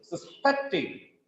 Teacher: Suspecting is a verb here. The stress is on second syllable.